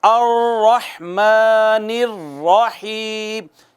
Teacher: تو اس میں کپ کپاہٹ ہے، اس میں تھر تھراہٹ ہے، ساؤنڈ ایک جیسی ریپیٹ ہوتی ہے۔ یہ صفت پائی جاتی ہے را میں۔ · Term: صفت تقریر